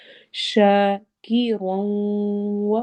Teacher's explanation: رو کو موٹا پڑھتے ہوئے واؤ سے ملانا ہے اور غنہ کرنا ہے